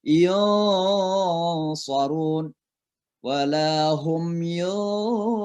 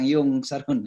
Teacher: Kebetulan pada ayatnya ada shad. Maka itu dibaca dengan namanya ikhfa, disamar-samarkan suara nunnya. Jadi suara nun itu seolah-olah masuk tapi samar-samar masuk ke dalam huruf shadnya.